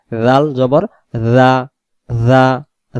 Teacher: জাল অক্ষরের মাখরাজ হলো জিহ্বার আগা থেকে নরম করে পড়তে হবে